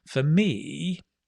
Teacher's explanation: falling rising intonation for me me right it's very common it's very natural